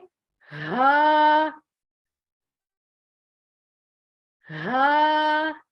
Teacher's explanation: हा आपने सीने से निकालना है